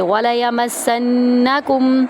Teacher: وَلَيَمَسَّنَّكُمْ، واو کو ہم آرام سے پڑھیں گے، لام کو بھی، یا کو بھی اور میم کو سین میں داخل کریں گے سختی کے ساتھ اور سین کو نون میں داخل کریں گے اور غنہ کریں گے